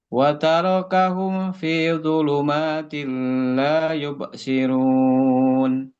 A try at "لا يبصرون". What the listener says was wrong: Basukun la yubsi. Masih ngalir suaranya, Pak. La yubsirun.